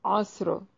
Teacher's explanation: عین کو واضح کر کے پڑھیں گے، صاد کو ہلانا نہیں ہے، صاد اس کو موٹا ادا کریں گے، را کو بھی موٹا پڑھیں گے وقف کی صورت میں